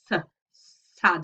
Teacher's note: we seem to have pushed our tongue up to the front of the alveolar ridge, s, sad, and it's a kind of hissing sound.